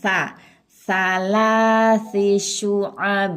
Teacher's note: Bukan sa, ujung lidah bertemu dengan ujung gigi atas.